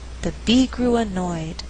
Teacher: I choose not to stress grew so that I have alternating stress